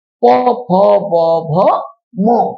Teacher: এই পাঁচটা বর্ণ উচ্চারণের সময় আমাদের উপরের ঠোঁট আর নিচের ঠোঁট দুটো ঠোঁট স্পর্শ লেগে এই বর্ণগুলো উচ্চারিত হয়। তাই এই বর্ণগুলোর নাম হলো ওষ্ঠবর্ণ।